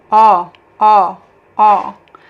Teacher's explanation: we have the open O sound. When you say it's open, because you actually have to open your mouth a little bit more. O, O, O. In English, we have this sound in many words, but I like to compare with the word O because it's just a single word.